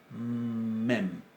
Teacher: La mem es una bilabial oclusiva, nasal, sonora.